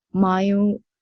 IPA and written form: maɪl (Mile)